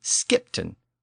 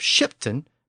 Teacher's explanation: with its Norse SK sound at the beginning instead of its English sh sound